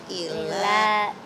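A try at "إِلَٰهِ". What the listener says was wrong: Ilanya panjang. Ilahin.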